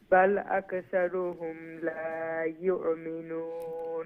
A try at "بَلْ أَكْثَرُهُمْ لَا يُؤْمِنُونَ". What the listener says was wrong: بل كاف don't bounce the calf بل أكثرهم لا يؤمنون همزة